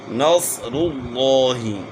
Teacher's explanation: صاد کو موٹا کر، نس نہیں پڑھنا